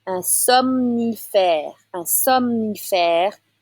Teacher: So you need to say both the M and N right after the other.